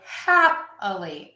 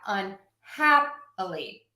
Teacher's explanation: If I add a suffix, the ly, I'm going to say happily. I'm still stressing the hap.